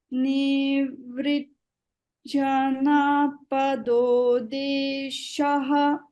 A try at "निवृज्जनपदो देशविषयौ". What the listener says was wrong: there you can't stop. Nivrjanapado desha vishayau.